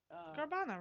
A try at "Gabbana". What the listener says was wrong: Gabbana, no R.